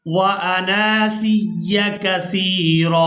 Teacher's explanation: اب یہاں پر بھی اس لفظ کو اکثر لوگ مجہول ادا کر جاتے ہیں، اس کی وجہ یہ ہے وہ یہ سمجھتے ہیں کہ آنا الگ لفظ ہے اور سیا یہ الگ لفظ ہے، حالانکہ یہ دونوں ملا کر ایک ہی لفظ بنتا ہے، اور یہاں ہم نے نون کو الف مدہ کی وجہ سے کھینچ کر ادا کرنا ہے